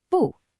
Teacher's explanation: Its default tone is the fourth tone, a sharp, decisive fall. Think of a quick, sharp command, bu.